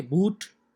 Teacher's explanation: do you think that your lips are rounded when you say boot yes they are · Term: rounded vowels